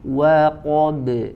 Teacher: Huruf ba di situ qalqalah ya dibaca tipis. Qa-nya tebal, ba-nya tipis lagi.